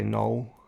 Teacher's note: in english i would just say null which is kind of the l kind of gets dropped in new zealand accents anyway